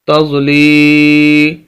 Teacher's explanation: یہ لام کو ہم یا کے ساتھ ملا رہے ہیں اور اس لام کو ہم کھینچ رہے ہیں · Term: یا مدہ